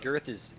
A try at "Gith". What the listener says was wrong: Sorry, it's pronounced the wastelands of Gith. The R is silent. So, but the R is now silent. So it's part of the Draconic dialect.